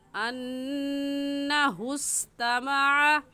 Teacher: نون مشدد ہے اور نون مشدد پر ہمیشہ غنہ ہوتا ہے